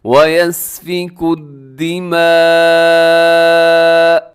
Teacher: یہاں پر لکھا ہوا ہے دماء، لیکن وقف کر لیں گے ہم کیونکہ جیم کی علامت ہے، تو وقف کرتے ہوئے آخر میں حمزہ زبر کو ہم ساکن کر دیں گے اور جھٹکے کے ساتھ تھوڑا روکیں گے، لیکن بہت زیادہ جھٹکا بھی نہ ہو.